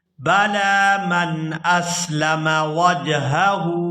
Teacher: یہاں لام پر کھڑی زبر ہے تو اس کو کھینچ کر ادا کریں گے